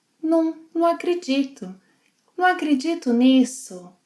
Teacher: Notice when she speaks how the word 'não' gets shortened to 'num'.